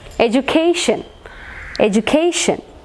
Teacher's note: So for ION we have to mark on the penultimate syllable. Penultimate syllable ആണ് നമ്മൾ stress mark ചെയ്യേണ്ടത്.